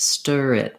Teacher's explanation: And so if I'm saying stir it, for example, then this R is really at the end of stir, but also kind of at the beginning of it, stir it, because I'm linking them together.